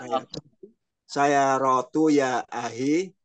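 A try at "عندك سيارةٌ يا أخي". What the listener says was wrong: Tanwin kan. Saya rotun.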